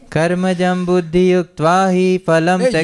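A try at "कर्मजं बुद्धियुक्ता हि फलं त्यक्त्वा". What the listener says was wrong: युक्त्वा नहीं है भाई, बार बार मुझे आपको भी त्वा सुनाई पड़ रहा था ना.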